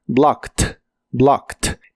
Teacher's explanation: blocked es un verbo regular Así que termina con e d en este caso esa e d se pronuncia como T